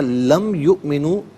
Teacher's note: میم ساکن پر یہاں پر غنہ نہیں ہوگا